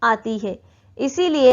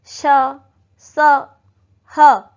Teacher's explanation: आप ऐसे बोल के देखेंगे तो आप फील कर पाएंगे कि अधिक घर्षण अधिक दबाव के साथ वायु बाहर निकल रही है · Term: उष्म व्यंजन